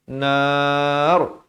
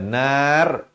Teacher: bila wakaf pada perkataan ro dalam keadaan yang begini R dibacakan tebal